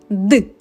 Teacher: зараз Давай перевіримо за допомогою долоньки дзвінкий цей звук чи глухий поклади долоню на горло та промов звук д горло працює так горло працює тож цей звук дзвінкий